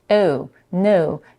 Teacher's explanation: She doesn't open her mouth much, and it sounds more like a rounded schwa sound. Oh, no, instead of no.